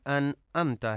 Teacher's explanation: انعمت، عین کو حمزہ پڑھا جاتا ہے عام طور پہ